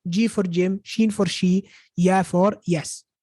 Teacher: The jim, sheen, and ya, which come from the middle of the tongue.